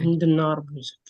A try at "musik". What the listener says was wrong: musik. it's music in English, but in Indonesia we just make it like musik, just like that. Musik.